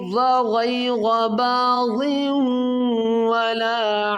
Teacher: دو زیر کی تنوین کے بعد حروف یرملون میں واو ہے تو یہاں پر ادغام غنہ کریں گے